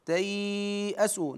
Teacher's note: من يوسف واخيه ولا تي ت اسوا هنا مد اللين تياسوا نمد بمقدار اربع حركات